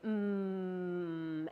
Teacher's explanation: You make this sound by closing your lips and letting the sound resonate through your nasal canal. So you close your lips and say mm, and you should be able to feel your nose vibrate.